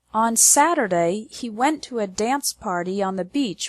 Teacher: the stress is on the words Saturday went dance party Beach and friends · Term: strong words